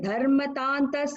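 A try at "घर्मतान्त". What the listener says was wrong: So one second, dharma la garma tanta ga, because ga, not the garma tanta, because it's heat, referring to heat, garmi.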